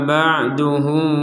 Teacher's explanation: ba sukun ini kita pantulkan